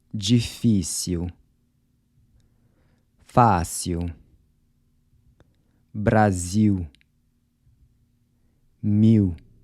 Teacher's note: the “l” sounds like a “w” when it comes before a consonant or at the end of a word